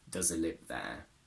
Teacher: I would simply drop the H